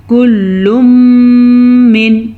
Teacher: اظہار، نون ساکن کے بعد عین آیا ہوا ہے جو کہ حروف حلقی میں سے ہے